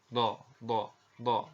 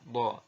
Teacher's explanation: Tapi secara teori begini. Jadi huruf do ini diucapkan dengan menyentuhkan sisi lidah kita dengan geraham-geraham atas ya. Boleh salah satu sisi disentuhkan dengan salah satu geraham atas kita, atau boleh juga menyentuhkan dua sisi lidah kita dengan dua geraham kita ya.